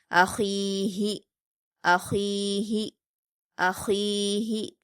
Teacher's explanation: ख पर या मद्दा है दो हरकात खींचकर हलक से अदा करेंगे और ख्वा हरूफ मुस्तालिया में से इसलिए पुर पढ़ेंगे अखी हा पर हरकतें जल्दी पढ़ेंगे और हा सीने की तरफ से अदा होगी · ہا پر حرکت جلدی پڑھیں گے اور ہا سینے کی طرف سے ادا ہوگی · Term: छोटी हा, چھوٹی ہا